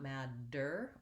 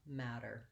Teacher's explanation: we also use a flap in that word which is basically we say a light d we don't linger on it it's not mad der or a matter with an aspirated t